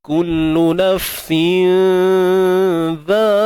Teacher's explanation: Huruf zal ni nipis, maka dengung kita pun ni nipis. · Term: ikhfa hakiki